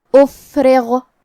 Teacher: را کے نیچے زیر ہے تو را کا حکم ہے ترقیق، ہمیں حرف را کو پتلی آواز میں پڑھنا ہے